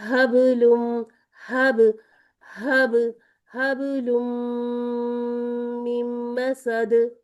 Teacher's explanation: ہمارا یہ جو با ہے حرف کلکلا ساکن ہے اور وصل ہے، روانی ہے. ہم رک نہیں رہے، ہب پر رک نہیں رہے، لیکن رکنا نہیں ہے تو یہ نہیں ہے کہ کلکلا کو بھی چھوڑ دیں.